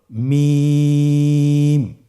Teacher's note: হরফটির উচ্চারণ স্থান 2 ঠোঁটের শুকনো স্থান থেকে উচ্চারিত হয়।